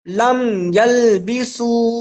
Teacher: میم کو ظاہر کر کے پڑھا جائے گا، اسے اظہار شفوی کہتے ہیں